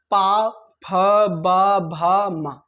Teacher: हमारी ओट क्या हुई आपस में चिपक रही खुल रही चिपक रही खुल रही इनको कहा जाता है पा वर्ग ये आवाज ओठों से आती